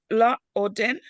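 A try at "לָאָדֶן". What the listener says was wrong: Well, there's no O here, but la aden.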